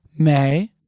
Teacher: The tones for this are second tone the rising tone may and then fourth tone the falling tone